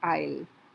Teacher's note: the I becomes a little longer before it merges with the L sound of the will.